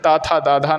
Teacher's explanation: ता था दा धा की जो लाइन है वो दंत के अंतर्गत